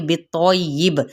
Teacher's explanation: تو پر پڑھا جائے گا، حروف مستعلیہ میں سے ہے ، تو کی زبر کو یا کے ساتھ، لیکن اس کی · با پہ جب ہم وقف کریں گے وقف بالاسکان، اور ساتھ ہی یہاں پہ قلقلہ بھی ہوگا کیونکہ حروف قلقلہ میں سے یہ با آ